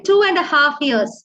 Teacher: two becomes chew, a kind of a ch sound. 2.5 years. So the lip moves to the hard palate.